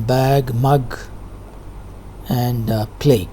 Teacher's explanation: g sound, symbol is easy to remember, is a voiced velar sound, as you have in bag, mug, and plague. Though spelling is different, the sound is g.